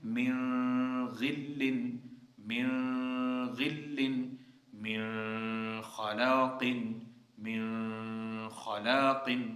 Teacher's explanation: لیکن یہاں پہ جو ہے وہ قاعدہ تھوڑا مختلف ہے۔ امام ابو جعفر کے نزدیک اس میں کیا ہوگا، اخفاء ہوگا اگر نون ساکن نون تنوین کے بعد خا اور غین آتا ہے، لیکن باقیوں کے لیے اس میں کیا ہوگا، اظہار ہوگا۔